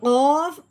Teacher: بڑا قوف جو حلق کی گہرائی سے نکلتا ہے